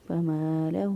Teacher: میم زبر الف ما ایک الف کے برابر لمبا کیا کیونکہ یہ الف مدہ ہے، اس پہلے والے حرف پر زبر ہو تو الف مدہ ہوتا ہے۔